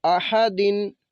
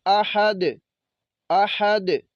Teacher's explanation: وقف کریں گے، دال کو ساکن کریں گے ہم، تو یہ پڑھیں گے آحد